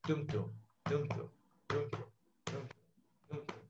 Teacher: Unstressed, stressed, unstressed, stressed, unstressed, stressed, dum dum, dum dum, dum dum, dum dum. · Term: iambic pentameter